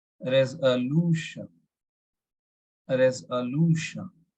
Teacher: We need to emphasize on lu.